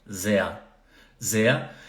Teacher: Sehr, som de A no final, então sehr, como se fosse Z-E-A.